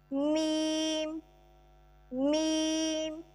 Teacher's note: बंद होंठों के खुश्क हिस्से से